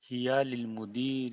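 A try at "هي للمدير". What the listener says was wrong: لی ہے، لیل نہیں.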